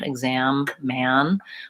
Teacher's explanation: you're not opening quite as wide on words like man and exam and so that may change the color or the quality